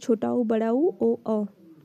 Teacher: वृत्त मुखी में आपके होठ का आकार गोल हो जाता है।